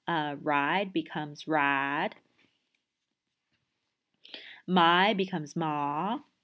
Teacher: you'll have you know, these monophthongizations. So ride becomes rad, my becomes ma.